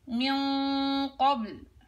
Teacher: إذن في الغنة تتبع ما بعدها تفخيما وترقيقا، فإذا جاء حرفها حرف مفخم بعديها حتجيبيها مفخمة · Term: غنة مفخمة